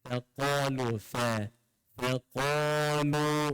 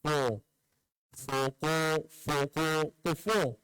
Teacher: Fa nipis, qaf tebal.